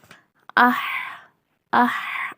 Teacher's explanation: இது வந்து ஹா வெறும் காத்து மட்டும் வர்ற மெலிதான எழுத்து